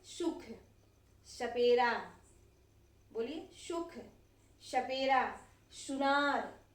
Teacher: हमारा जीभ जो है हमारे दंत को यानी कि दांत को छू रहा है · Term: सपेरा श